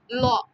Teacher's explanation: ল উচ্চারণ করতে গেলে কিন্তু জিব্বাটা হচ্ছে শুধু মাঝখানটাই লাগতেছে দুই পাশ কিন্তু ফাঁকা হচ্ছে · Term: পার্শ্বধনী, পার্শ্বধ্বনি